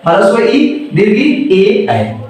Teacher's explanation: ई वाला जो है ना, ये जीभ के आगे वाले भाग से होता है। और जो है और ये मध्य भाग से होता है, इसलिए मध्य स्वर कहते हैं। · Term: अग्र स्वर